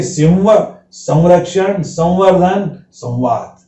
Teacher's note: बिंदी नासिका के साथ साथ व के समान भी उच्चारण करती है।